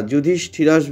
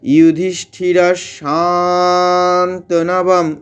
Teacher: বিসর্গটা তালব এর মত উচ্চারণ হবে